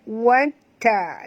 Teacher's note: Ta ada dua, maka kita baca njut dekat sini Watta, lembut kerana ta adalah huruf istifal, huruf ringan jangan tebal